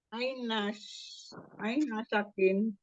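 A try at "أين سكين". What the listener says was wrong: Nah, kebalik harokatnya. Sinnya kasroh. Aina sikin.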